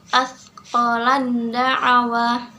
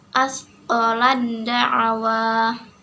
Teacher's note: Di situ ada ta mati bertemu dengan huruf da yang berharokat, maka ta-nya tidak dibaca dan langsung membaca ke dalam huruf da. Asqalan da'awa. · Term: idgham mutajanisain